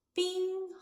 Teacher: bing, high-level tone, first tone.